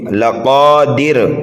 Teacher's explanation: دال کو جلدی پڑھیں گے، را کو جلدی پڑھیں گے، را کو پر پڑھیں گے اس لیے کہ را کے اوپر دو پیش ہے۔ یہاں پر اگر ہم وقف کریں گے تو را کو باریک پڑھیں گے